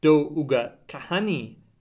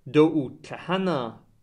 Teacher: past tense is marked by a high tone, whereas present tense is unmarked